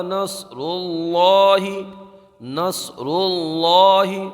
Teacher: اذا جاء نصر اللہ، نصر اللہ، صاد کو برابر ادا کریں گے، اللہ کے لام کو پر پڑھیں گے